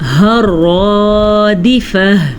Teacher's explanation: را کو پر پڑھنا ہے، ہا کو چھاتی سے نکالنا ہے کیونکہ یہ والی ہا جو ہے دو آنکھوں والی یہ چھاتی سے نکلتی ہے